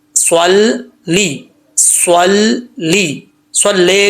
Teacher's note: سواد جو ہے حروف مستعلیہ میں سے, اس کو پر پڑھیں گے